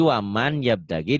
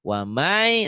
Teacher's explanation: kalau nun mati ketemu iya, berarti bunyi N-nya hilang sekarang. Melebur ke Y. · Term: idgham bigunah